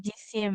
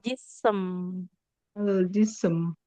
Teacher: Jadi habis S langsung M tidak ada I-nya dulu. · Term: sin sukun